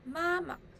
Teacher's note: neutral tone is soft and short